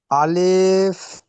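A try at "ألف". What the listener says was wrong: আলিফ টান হবে না। আলিফ এবং হামজা এই দুইটা টানবিহীন পড়তে হবে দ্রুত।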